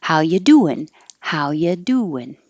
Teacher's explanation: the first part of the verb is going to be the emphasize part and then the ing changing to on is the shorter part